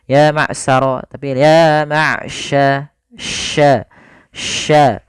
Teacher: hati-hati dalam hafal shin, jangan sampai dibaca dengan sin